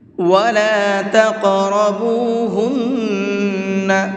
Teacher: نون کے اوپر تشدید ہے تو یہاں پر غنہ کریں گے